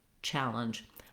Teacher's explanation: the ch sound is just a quick pushed out sound. It doesn't continue. So not challenge, but challenge.